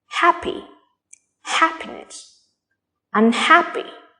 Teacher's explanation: the stress is still on ha